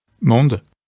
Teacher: the Latin word mundus lost its final S